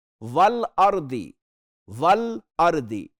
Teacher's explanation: वल अर्दी, वल अर्दी, लाम वाज़े पढ़ा जा रहा है, हुरूफ कमरी में से है